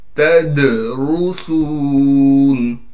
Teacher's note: تدرسون، تا کو دال سے ملا دیں گے، دال حروف قلقلہ میں سے ہے اس لیے یہاں پر آواز کو ہلائیں گے اور را کو موٹا کر کے پڑھیں گے اس لیے کہ را پر پیش ہے۔ · سین میں سیٹی بھی ادا کریں گے اور سین کو ایک الف کی مقدار کھینچیں گے